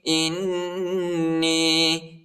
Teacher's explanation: حمزہ کو نون کے ساتھ ملائیں گے اور نون کو یا کے ساتھ ملائیں گے اور غنہ کریں گے